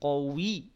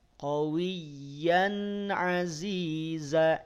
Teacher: Ya bertasydid, maka yang ditekan huruf ya-nya, bukan wawunya. Bukan qawi, tapi qawiyya.